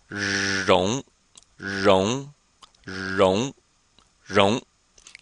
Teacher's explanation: in pinion the r your tongue is curled just like it is in z h and CH and Sh